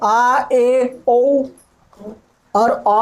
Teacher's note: मुंह half open रहता है, यानी आधा खुला रहता है। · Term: अर्धविवृत